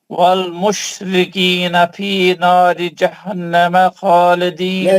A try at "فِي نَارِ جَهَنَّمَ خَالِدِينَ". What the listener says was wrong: نہیں، آپ پورے غنے چھوڑ دیں. فی ناری جہنم. بھائی نون مشدد کا غنہ رہتا، نون مشدد یا میم مشدد آیا تو आप भाग रहे हैं कहीं के वास्ते, क्या जल्दी है आपको?